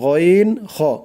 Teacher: কণ্ঠনালীর শেষ হইতে, মানে গলার শেষ ভাগ থেকে উচ্চারিত হয় গইন খ। গইন, এই যে মোটা করে, মোটা করে বলতে হবে গইন খ।